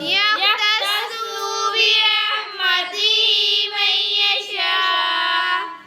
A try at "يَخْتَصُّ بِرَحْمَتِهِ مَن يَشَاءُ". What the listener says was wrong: ही को लंबा करना है, यख्तस्सु स्वाद को लंबा नहीं करना है।